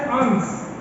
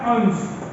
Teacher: एक में तालव्य से है और दूसरे में दंत से है